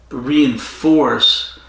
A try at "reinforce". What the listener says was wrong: That was a hard S. You said reinforce. You whistled. Reinforce.